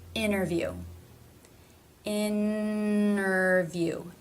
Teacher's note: there's no stop there's no T there's no D · native speakers will altogether leave out a T sound that does actually exist in IPA this would be when the T begins an unstressed syllable and the syllable before ended with an N